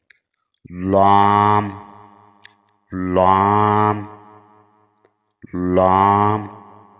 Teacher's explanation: जुबान का किनारा एक साइड पर भी लगकर हर्फ लाम अदा हो सकता है और दोनों तरफ भी